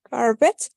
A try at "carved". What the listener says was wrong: La E no suena. Solamente vamos a mencionar la E del ED cuando la palabra termine en T o en D.